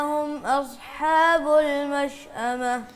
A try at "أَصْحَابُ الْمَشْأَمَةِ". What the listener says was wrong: اصحاب نہ کہیں، حمزہ باریک ہوتی ہے نا. هم اصحاب المشأمة.